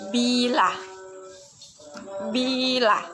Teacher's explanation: Vokoid adalah bunyi ujar yang dihasilkan dengan tanpa merintangi udara yang keluar dari paru-paru dalam ucap kita. Bunyi I, ciri-ciri tinggi depan tak bulat.